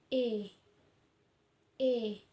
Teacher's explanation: posisi lidah kita maju ke depan, bentuk mulut tak bundar, serta strukturnya semi tertutup